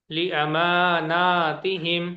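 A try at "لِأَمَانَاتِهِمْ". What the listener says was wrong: जबरदस्त, माशाल्लाह।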